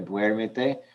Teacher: When I don't have the te in there, there's no need for an accent mark. When I add a syllable, now it's the third from the last syllable that's stressed